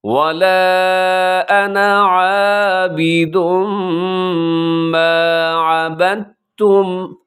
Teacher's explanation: دال اور تا دونوں اکٹھے آگے ہیں، تو آپ نے یہاں پہ تا پڑھنا ہے